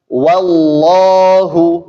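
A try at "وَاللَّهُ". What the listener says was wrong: jangan sudah kemasukan tafkhimnya. Ya, jadi tetap wa tipis.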